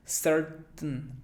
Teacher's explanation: Alguien diría certain, pero no va como que tain, como que ese diptongo ain no suena, sino que simplemente certain. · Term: glotal